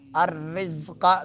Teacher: زا میں سیٹی نکالیں گے، را کو باریک پڑھیں گے، رزقا قاف کو پر پڑھیں گے